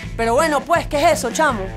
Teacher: We've replaced the letter S with a little sigh. We're reminding you that talking needs to be easier by constantly sighing out air from our lungs.